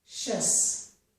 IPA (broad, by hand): ʃəs